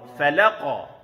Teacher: Jadi la tipis, qaf tebal dan qalqalah kubra.